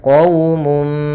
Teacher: Kemudian pada lafal qawmum musrifun, di sini ada qaw yaitu bacaan lin, yaitu adanya waw sukun di dalam fathah, lembut dalam pelafalannya qawmum. Kemudian mum yaitu adanya dhammatain bertemu dengan mim, maka hukum tajwidnya yaitu idgham bi gunnah.